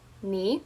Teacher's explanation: So, to say hello correctly, you're going to say ni as you're going up like up with your voice.